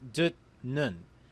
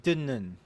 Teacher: The word on screen will be pronounced dut nun, but the digut meets a niun, so the digut turns into the consonant niun. Therefore, the word is pronounced dinnun.